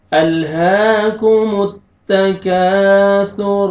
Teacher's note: تا کو پتلا کر کے باریک پڑھیں گے تاکہ طا میں مکس نہ ہو